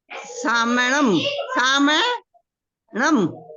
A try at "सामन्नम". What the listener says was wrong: सामन्नम, म के बाद न पे प्रेशर देना है, सामन्नम। म, सामन, ऐसे बोलो सामन, सामन, सामन बोलो, सामन नम, सामन, हाँ सामन्नम। कोई बात नहीं, धीरे से आएगा, सामन्नम।